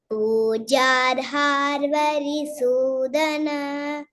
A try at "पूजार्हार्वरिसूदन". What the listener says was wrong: Pujar ha. Pujar har is not there. Pujar ha varisudana.